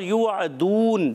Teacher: आइन अदा होगा हलक के दरमियान वाले हिस्से से